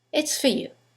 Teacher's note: preposition for in the sentence the vowel is reduced to F it's for you now you don't need to use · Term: weak forms